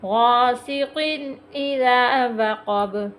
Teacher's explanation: غاسق اذا وقب، با پھر حروف کلکلا آ گیا، اس پہ وقف کر رہے ہیں، وقف کی صورت میں با کو ہم ساکن پڑھ رہے ہیں، یہاں ہم کلکلا کریں گے